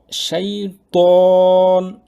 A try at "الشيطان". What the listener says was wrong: জিহ্বাটা আরেকটু পিছনে নেন, জিহ্বাটা আরেকটু পিছনে। ত ত একটু বাতাস চলে আসে, খুব বেশি না, কিন্তু জায়গার মতো লাগলে আরেকটু সুন্দর হবে লেটারটা। আরেকটু পিছনে জিহ্বাটা টেনে নেন। ত যেন দাঁতের মধ্যে জিহ্বাটা না চলে আসে, ঠিক আছে?